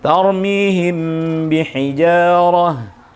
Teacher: Dia mingkem mim bertemu dengan mingkem ba, mingkem. Sehingga harus tetap tertutup, tapi dengan catatan saat membaca ikhfa syafawi jangan sampai terkesan seperti tasdid, yaitu mingkemnya berlebihan.